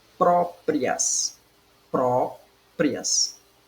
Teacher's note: a penúltima sílaba é a mais forte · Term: sílaba tônica